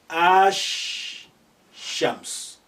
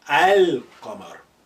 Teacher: So you are linking the a with sh. Ash shams. Whereas here, the moon letters, when they come after the al, they will not be carrying any shadda. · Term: sun letters